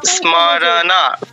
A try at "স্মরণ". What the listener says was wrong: না না, আকার যোগ হবে না, আপনার ণয়ের উচ্চারণ স্থানটা ঠিক নেই। ওই ণা উচ্চারণটা হচ্ছে ণা, না নয়, স্মরণ, স্মরণ।